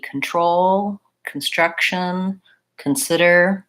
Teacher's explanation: There's a lot of words that have the con sound, more similar to done than to the ah sound in context or consult.